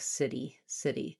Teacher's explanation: The main place that that happens is when the /i/ is unstressed at the ends of words. So in a word like city which has the stress on the /ɪ/ syllable and is unstressed on the /i/ sound I will often hear city instead of city city.